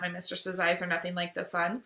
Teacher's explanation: unstressed stressed unstressed stressed unstressed stressed unstressed stressed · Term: iambic pentameter